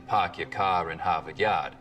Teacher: The stereotypical Boston accents, of course, are non-rhotic, meaning no R sounds in park your car in Harvard Yard.